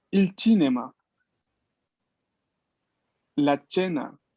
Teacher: En este caso, el sonido es ch, no es k.